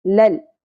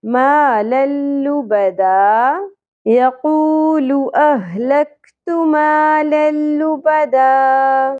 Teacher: دو زبر تنوین کے بعد لام ساکن آ گیا، ادغام بغیر غنہ ہوگا، لل۔